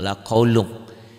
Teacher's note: lun ini ketemu fa, n-nya jadi eng